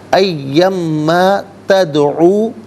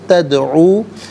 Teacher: دال ساکن ہے لیکن حرف قلقلہ ہے، آواز لوٹتی ہوئی محسوس ہونی چاہیے۔